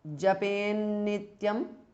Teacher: Japet, the th changes to n because of sandhi. Nityam. Japen Nityam because of sandhi.